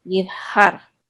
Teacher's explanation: you're just constricting the muscles of your throat while you make the H. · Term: Het